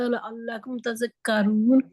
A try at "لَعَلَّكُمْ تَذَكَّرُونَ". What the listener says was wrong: لعل بریک لفظ ہے نا, بریک حرف ہے. لعل اگر آپ لعل کریں گے تو وہ موٹا ہو جاتا ہے. اچھا نہیں, آپ ایسا کریں, اپنا منہ سمائلی کریں.